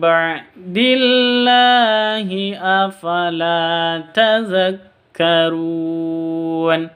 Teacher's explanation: Afala la panjang dua harakat atau dua ketuk di sini ada Alif diawali dengan sebelumnya ada f fathah begitu